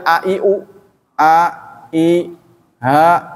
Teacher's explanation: aksal halqi, ujung tenggorokan, pita suara makhraj hamzah dan ha.